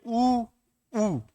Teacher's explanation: ऐसे स्वर जब जब उनका उच्चारण मुंह से करते हैं ना तो मुंह वृत्त के समान हो जाता है। · जिसका उच्चारण करने पर आपका मुंह एकदम गोल हो जाता है, व्रत के समान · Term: संवृत स्वर, संवृत